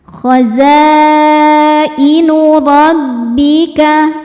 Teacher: Hamzahnya i terdapat pada kata yang sama yaitu khozainu. Maka zainnya dipanjangkan empat atau lima harakat namun tidak boleh dua. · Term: mad wajib muttasil